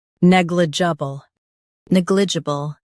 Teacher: Stress neg and keep juh soft